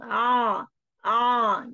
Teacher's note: ain itu tekanannya ke tenggorokan bagian belakang